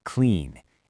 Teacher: It ends in a voiced N sound. Clean. To make it past tense, we just add a D.